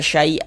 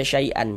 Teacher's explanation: jadi dibaca dua harakat panjangnya. Kemudian tanwinnya dirubah menjadi fathah. Ini dirubah menjadi fathah. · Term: mad iwat, mad iwad